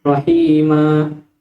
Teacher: مد العوض هو مد في حالة الوقف على تنوين النصب فقط نحو رحيما، وسمي عوضا لأننا عوضنا التنوين بالألف ويمد بمقدار حركتين